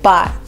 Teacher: Et même le T à la fin de bat, on le dit pas